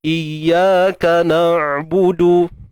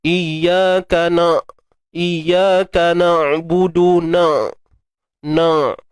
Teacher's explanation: So memang jauhlah potensi ain ni nak jadi bunyi dengung. Sebab tu bunyi ain tu perlu didatangkan daripada kerongkong.